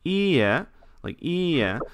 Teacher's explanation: the word no ie, the pitch accent's a little different. So the second e tends to go up.